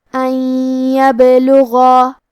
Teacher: کلمت ان کے آخری میں نون ساکن ہے پھر حرف لیا ہے کلمت یبلغا. یا حروف الادغام بغنہ میں سے ہے تو ہم یہ حکم کو غنہ اور تشدید کے ساتھ ادا کریں گے